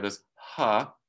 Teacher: we get this aspiration this little puff of air